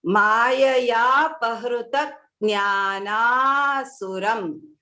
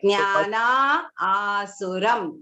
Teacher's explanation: again when you do the sandhi, the visarga disappears and you will read it as mayaya pahrutak jnana suram.